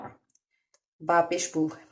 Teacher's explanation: बा जो है वो होंठों के तर हिस्से से पढ़ा जाता है, होंठों के तर हिस्से से ये अदा होता है।